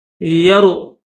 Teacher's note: امن ھذا الذی، یرو، را کو موٹا کریں گے، یرزقکم، یہ قاف دو نقطوں والا ہے، اس کو موٹا کریں گے، اس کے بعد درمیان میں یہ کاف ہے تو اس کو باریک کریں گے۔